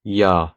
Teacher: So, like in this Coptic word, it's going to be pronounced misi, which means birth, not misi. If there is a vowel before or after, it's going to be changed to a pronunciation that's similar to a Y in English